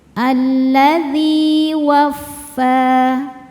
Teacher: Alladzi dzi hukumnya mad thobi'i zohiri karena ada ya sukun sebelumnya kasrah. Cara bacanya panjang dua harakat.